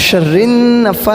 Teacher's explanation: ایک الف کے برابر گنہ کرنا ہے